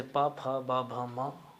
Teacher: प, फ, ब, भ, म बोलने के लिए हमें होष्ठ को आपस में मिलाना आवश्यक है। यदि ऐसा नहीं कर पाएंगे, नहीं करते हैं, तो इनका उच्चारण शुद्धतम रूप से नहीं हो पाएगा।